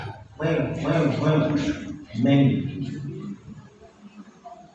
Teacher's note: Keluarnya itu makhrajnya itu dari bibir, kedua bibir mim. Terus bibirnya kudu nempel.